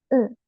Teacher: el caso del kana u, tiene pronunciación especial porque es una u sonriente